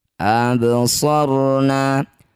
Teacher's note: Bak sukun di tengah bacaan disebut qalqalah sugro, pantulkan baknya, pantulannya kecil saja. Absarna. Ro sukun didahului fathah disebut bacaan ro tafkhim atau ro tebal.